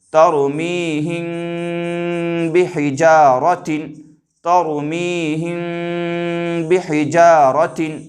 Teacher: میم ساکن کی آواز کو ناک میں چھپا کر کے پڑھیں گے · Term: اخفائے شفوی